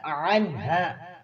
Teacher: عین کو وسط حلق سے ادا کریں گے ، عنہا، یہاں پر قاعدہ بھی ہے، اظہار ہو رہا ہے۔